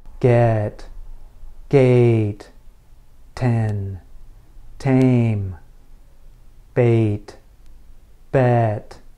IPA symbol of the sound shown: eɪ